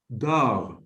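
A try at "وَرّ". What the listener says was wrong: Now this letter is I know that it's difficult for you to pronounce. Va. It's close to da. But it is not da. The va. So var. Var.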